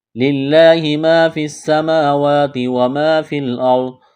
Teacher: یہاں را ساکن سے پہلے زبر ہے تو را کو موٹا کرنا ہے